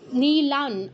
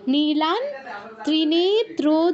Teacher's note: অনুসারের জায়গায় নয় হসন্ত উচ্চারণ হবে, যেহেতু পরে ত বর্গীয় অক্ষর আছে, অর্থাৎ ত আছে।